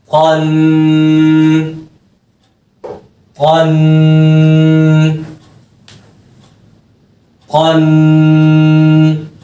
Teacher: और जो है मखरज से मोटा हर्फ है, तो आपने इसकी अदायगी मोटी पढ़नी है।